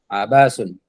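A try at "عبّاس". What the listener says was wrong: Pakai tasydid di huruf ba-nya.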